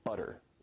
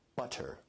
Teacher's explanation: Now notice where we write it with two T's in English that your tongue is producing a tap sound there rather than a full stop or plosive sound. So in North American English you say butter. Now as compared to in received pronunciation where you say butter, that involves a full t stop.